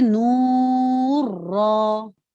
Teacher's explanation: کیونکہ یہاں اظہار نون کا نہیں کرنا تھا، ہم پڑھتے تھے نور را. نون کو را میں اس طرح مرج کیا کہ وہ مشدد ادا ہوئے اور بغیر غننے کے ادا ہوئے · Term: ادغام بلا غنہ